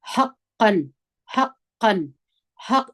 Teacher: لقد حقا ح په زور د قاف سره یو ځای کوو. حام د ستوني د تورو څخه ده او قاف د درنو تورو څخه دي